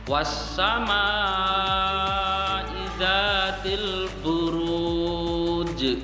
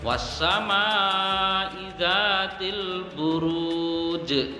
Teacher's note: ada huruf jim berharokat sukun di akhir ayat dan dibaca waqaf, maka dia termasuk qalqalah kubra. Jadi dia harus dipantulkan dan pantulannya lebih berat lagi, lebih tebal lagi.